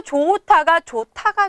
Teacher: 히읗과 디귿이 하나로 합쳐진 것이죠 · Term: 축약 현상